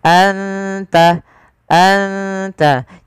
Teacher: ada bacaan Ikhfa Hakiki yaitu suara nunnya disamarkan ke huruf ta